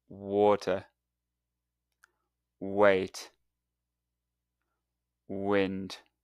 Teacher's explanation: Now, you'll notice that the W sound is softer and doesn't have a lip vibration like the V sound.